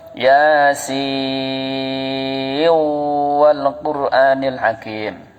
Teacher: Ini kalau terus. Kalau ibu baca Yasin kok terus, nggak berhenti, sinnya kok terus, nunnya kok terus, maka tetap dibaca nun. Jangan jadi idgham. Jadi harus tetap Yasin wal Qur'anil Hakim. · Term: idhar mutlak